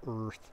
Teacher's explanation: a word like earth, R is really the vowel. There's no vowel preceding R